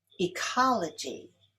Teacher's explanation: Ecology is stressed on the second syllable.